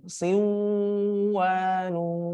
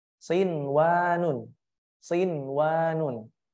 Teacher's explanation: Pada kata sinwanun itu mesti dibaca izhar atau jelas. Tidak boleh dibaca idgham bi gunnah.